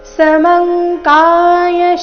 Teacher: ಸಮಂ ಅನುಸ್ವಾರದ ಉಚ್ಚಾರಣೆ ಇಲ್ಲಿ ಕ ವರ್ಗದ ಅನುನಾಸಿಕ